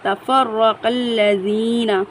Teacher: را پر تشدید ہے، فا کو را کے ساتھ سختی سے ملائیں گے